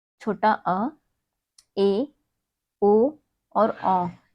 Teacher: जिन स्वरों के उच्चारण में मुख द्वार आधा खुलता है वो है छोटा अ, ए, ओ और औ। ये हमारे स्वर हैं जो हमारे मुख के आधा खुलने पर इनका उच्चारण होता है। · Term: अर्ध विवृत